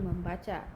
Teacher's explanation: proses pengimbuhan prefix imbuhan me pada dasar baca akan memunculkan bunyi sengau m yang semula tidak ada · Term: pemunculan fonem